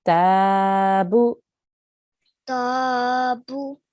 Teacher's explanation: Ta is for 2 seconds because it has a vertical fatha on top. Bu is for 1 second because it's a simple dhamma.